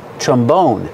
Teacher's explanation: put the stress on the second syllable